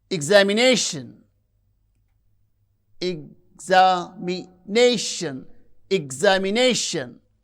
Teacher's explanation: You can see the stress syllable is nei, that receives primary stress.